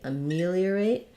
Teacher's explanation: is gonna sound like uh it's going to be vowel schwa then our stress is on the me syllable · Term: second syllable stress